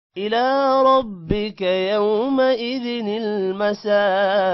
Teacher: إلى ربك کا کو لمبا نہیں کرنا